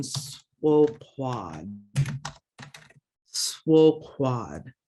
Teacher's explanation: Q raised W, back of the throat, and you're going to be blowing out